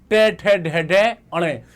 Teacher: जब आपकी जीभ उल्टी हो जाती है, यह आपका मूर्धन्य है।